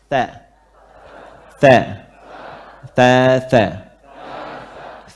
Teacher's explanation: Lidah yang depannya ini gigit sedikit lagi gigit seri.